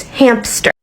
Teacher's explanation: It's difficult to move quickly from your lips to the place on your palate where you pronounce the S and the T, so people insert a P to make it easier. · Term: bridging consonant clusters